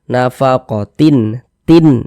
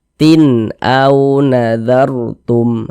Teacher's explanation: Huruf hamzah termasuk huruf izhar halqi, maka tanwin berjumpa dengan huruf hamzah, hukumnya izhar halqi. Sehingganya dibaca jelas dan tidak berdengung.